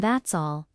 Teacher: The T in that's is soft. It blends into all.